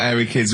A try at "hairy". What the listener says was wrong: Sorry, I noticed both of you there dropped the H, or the H, or however it's airy, obviously means hairy, hairy children, not sort of airy, kind of light-headed or...